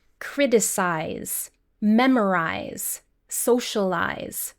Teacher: This happens a lot with Spanish speakers who try to pronounce similar words that end with isar in Spanish. But in English, the ending is unstressed and only has 1 syllable. Eyes, like your eyes.